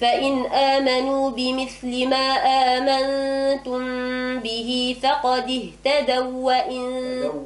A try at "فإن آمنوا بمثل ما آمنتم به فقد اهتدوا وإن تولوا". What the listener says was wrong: هكذا بالتخفيف صار الإدغام أين الإدغام؟